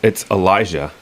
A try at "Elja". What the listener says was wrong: It's Elja. Or it's pronounced Elja. There's no I in there.